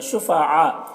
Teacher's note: یہاں پر مد متصل سے 3-4 الف کے برابر کھینچیں گے